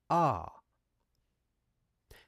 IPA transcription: ɑː